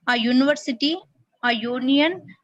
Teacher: Also, a university, a union, because these words begin with the consonant sound of yu